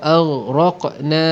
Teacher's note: Ghain bukan sifat syiddah. Ghain tak boleh ada qalqalah.